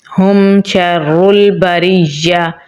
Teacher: मीम साकिन के बाद शीन है तो मीम पे हम इजहार करेंगे।